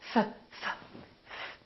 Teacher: There's no vibration in my vocal cords, so the F is actually a voiceless sound.